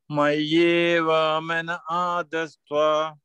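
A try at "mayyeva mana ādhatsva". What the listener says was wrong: Mayeva mana adatva. അവിടെ സാ തന്നിട്ടുണ്ട്. പക്ഷെ ആ സാ നമ്മൾ സന്ധി അവഗ്രഹം ചെയ്ത് കഴിഞ്ഞിട്ട്, അതായത് കമ്പൈൻ ടേം ആയി കഴിഞ്ഞിട്ട് അത് നമ്മള് സാ പറയത്തില്ല. പക്ഷെ അത് അവഗ്രഹം ചെയ്യുകയാണെങ്കിൽ നമ്മൾ ആ സാ പറയൂ.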